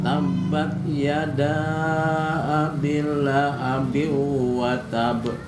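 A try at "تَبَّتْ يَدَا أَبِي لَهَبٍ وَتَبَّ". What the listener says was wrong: B-nya panjangin. Bukan abil tapi abi lahabi. Tabat. Lahabnya hak besar.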